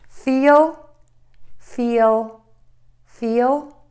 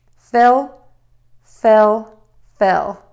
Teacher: making that long e nice and long and tense and then by thinking about making that short I short and a little more relaxed